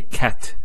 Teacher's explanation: So the t doesn't have any vowel associated with it. It's actually just a stop on the T. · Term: sukun